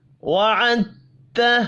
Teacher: دال ساکن ہے، آگے تا مشدد ہے، ہم دال ساکن نہیں پڑھیں گے، عین کو تا مشدد کے ساتھ ملائیں گے